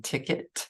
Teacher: often does not say quite the expected sound like in ticket that e sounds more like a short I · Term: schwa